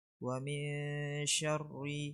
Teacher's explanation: نون ساكنة مخفى عند الشين المفتوحة بغن حركتين